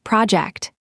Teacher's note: where is the stress in the noun project? The answer is the first syllable